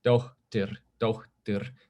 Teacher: In Icelandic, that puff of air happens before some consonants. So like the name suffix that people have, meaning daughter of someone, is dóttir, dóttir.